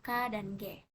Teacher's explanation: bunyi yang terjadi dengan cara menempelkan pangkal lidah ke langit-langit lunak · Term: Konsonan dorsovelar